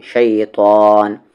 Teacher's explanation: تا کو ہیوی کرتے ہوئے، شیطان، نون پر غنہ کریں